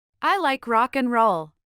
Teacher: Y pongamos atención a la palabra, And. que reduce su sonido prácticamente al sonido de una N.